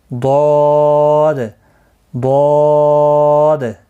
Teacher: زبان کی کروٹ بنا کر داڑھوں کے جڑ سے ادا ہوتا ہے